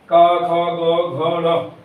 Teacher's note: तो सबसे पहले गले कंठ मतलब गले से निकलते है